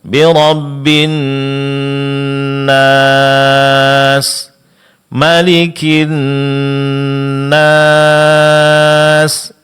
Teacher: Tinggal sedikit pada mad arid lis sukun, yaitu berhenti pada setiap akhir ayat. Jangan lupa itu dipanjangkan 4 harakat.